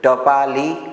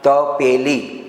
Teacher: હવે તમે બોલો ટ બોલશો એટલે જીભનું જે ટેરવું જે છે એ તાળવે અડે છે, ટ ઠ. હવે મારે ટપાલી બોલવું છે તો જીભનું ટેરવું એ તાળવે અડે. તપેલી બોલવું છે તો જીભનું ટેરવું જે છે તાળવે નથી અડતું.